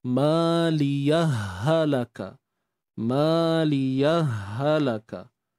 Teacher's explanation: Dia bukan mat, dia bukan pemanjangan. Ianya adalah idgham.